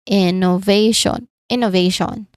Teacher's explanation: Pay attention to the placement of the primary stress on the third syllable